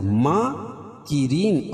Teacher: اور یہ را جو ہے باریک پڑھی جائے گی۔ ما الف مدہ، اور وقف کی صورت میں یہ مد عارض وقفی ہوگا۔